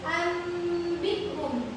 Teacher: Anikhum itu dibaca menjadi ambihum. Jadi bunyi nun sukun tadi berubah menjadi bunyi mim sukun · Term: iqlab